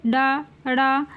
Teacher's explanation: जीभ ऊपर उठकर झटके से नीचे की ओर जाती है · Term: ताड़न जात ध्वनि